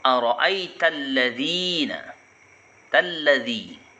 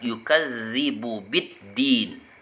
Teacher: alif lam yang tidak dibaca karena ada huruf bertasdid sesudahnya. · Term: alif lam syamsiyah